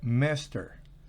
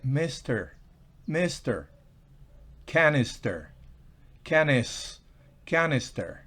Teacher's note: La I o la I también tiene un sonido gutural corto, parecido a la E cuando va antes de la S y esta, es decir, la S al final de la sílaba.